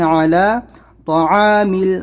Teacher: طا ہے یہاں پر تو طا کو بھی موٹا پڑھنا ہے، تعامل نہیں کرنا ہے